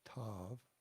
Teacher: the T sound is more aspirated. The tongue is in the same place as the D sound, and there's t, t.